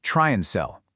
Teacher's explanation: That word and gets reduced to just a quick N sound.